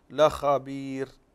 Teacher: هنا الراء مرققة وصلا لأن قبلها ياء مد